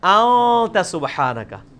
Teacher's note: اخفا اسے کہتے ہیں کہ خفی کر کے پڑھ رہے ہیں، نون پورا واضح نہیں کر رہے، ان نہیں پڑھ رہے، پڑھ رہے ہیں.